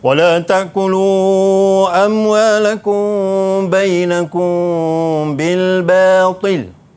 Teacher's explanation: Amwalakum yang ni hukum dia ikhfa syafawi, dengung. Wala taqulu amwalakum bil batil, 2 harakat.